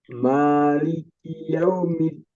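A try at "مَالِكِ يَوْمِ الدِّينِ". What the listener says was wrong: Sedikit di sini ada lin, jadi sedikit ditahan. Boleh dua harokat, ya. Harusnya dua harokat. Maliki yaumid, tidak. Maliki yaumiddin, dipanjangkan dua harokat. Maliki yaumiddin.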